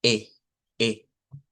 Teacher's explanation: Es como la E del español, pero con la mandíbula más abierta. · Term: E abierta del inglés